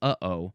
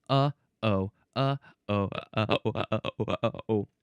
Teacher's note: So, yeah, I like the example uh-oh because I'm not using my mouth, I'm not using my tongue or my teeth or anything like that to stop the sound. I'm using the thing in my throat by my vocal cords to stop the sound. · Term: glottal stop